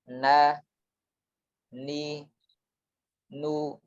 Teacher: Adapun nun dan ro hanya sekedar ujungnya yang ditempelkan ke bagian langit-langit atas yang dekat dengan gusi, yang paling depan. Jadi huruf nun bersamaan dengan menempelkan ujung lidah tadi juga mengeluarkan udara dari rongga hidung.